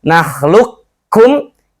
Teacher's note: idgham kamil, idghamnya sempurna semuanya, qafnya hilang sama sekali, mulai masuk lu langsung ke kaf, karena ini makhrajnya sangat berdekatan.